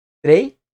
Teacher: a vogal E e a semivogal I, que formam um ditongo, ficam juntas na mesma emissão de voz.